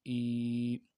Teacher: کھڑی زیر کو ایک الف کی مقدار میں کھینچ کے پڑھیں گے